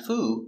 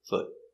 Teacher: tongue up and stop foot foot one foot remember the sound it's the short foot not the long oo · It's the short foot. Not the long ooh, not foo, but foot.